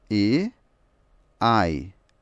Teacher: Por que o E é um ditongo? Porque ele é um A mais um I. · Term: ditongos